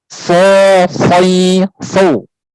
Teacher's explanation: Sob tidak punya sifat infitah, tapi dia punya sifat itbaq, melekatnya lidah ke langit-langit, ya.